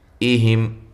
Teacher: حمزہ کو تحقیق کے ساتھ، اور یہاں میم ساکن کا اظہار ہے